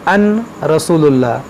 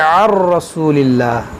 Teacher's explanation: اس نون کو اس را میں داخل کر دیں گے، یہاں پر نون کی آواز نہیں آئے گی